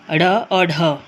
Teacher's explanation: जिनके उच्चारण के समय जीभ पहले उठकर मूर्धा का स्पर्श करती है और फिर झटके से नीचे आती है। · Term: द्विगुण व्यंजन